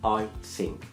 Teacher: I think خطأ لأن اللسان كان جوه، لازم أقولها I think، لساني يكون لبره